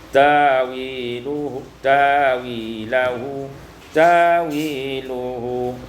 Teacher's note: Pada ayat 53 ta'wiluhu, ada dua tempat, ada ibdalul hamzah alifan, ditukar hamzah dengan alif